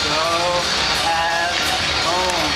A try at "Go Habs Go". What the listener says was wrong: Go, not home. Jeez.